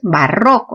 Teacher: Sílaba tónica, ro. Entonces es una palabra grave terminada en vocal